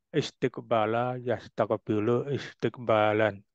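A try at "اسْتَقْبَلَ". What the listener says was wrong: Bukan istiqbala, Pak. Hati-hati harokatnya. Wazannya kan istaf'ala. Istakbala, bukan istiqbala. Nah, huruf taknya di fathah pakai. Tadi jenengan kan masih di kasroh itu.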